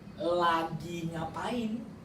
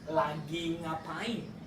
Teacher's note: this is rising intonation at the end.